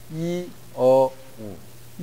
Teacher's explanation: 어가 이, 어, 우 가운데 어가 입을 가장 많이 벌리는 음입니다. 그러니까 어가 강해야 됩니다.